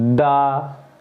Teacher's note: जीभ का जो अगला हिस्सा जो है ऊपर वाले दांतों में लगता है